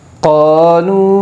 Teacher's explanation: قِيلَ لَهُمْ لَا تفسدوا في الأرض قالوا مد منفصل ہوگا، حروف مدہ کے بعد حمزہ دوسرے کلمے میں، اس لیے مد منفصل ہوگا، اور مد منفصل کو 3 الف کی مقدار کھینچ کر پڑے گی